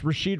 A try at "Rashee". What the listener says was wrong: Come on, get it right. Rasheed. There ain't no D.